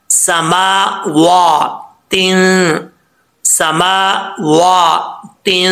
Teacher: मीम के ऊपर भी खड़ा ज़बर है, वाओ के ऊपर भी खड़ा ज़बर है, दोनों को एक एक अलिफ की मकदार लंबा करके पढ़ना है।